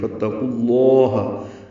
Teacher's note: تا باریک ہے، قوف پر ہے، قوف کو لفظ اللہ کے لام سے ملائیں گے تو لام اسم جلالہ پر پڑھیں گے. فَاتَّقُوا اللَّهَ ہا کو جلدی ادا کریں گے، لام کو دو حرکات لمبا کریں گے.